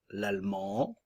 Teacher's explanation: le D ne se prononce pas nous avons la nasale en à la fin